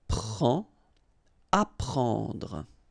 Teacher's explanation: combination of E and N gives you this nasal en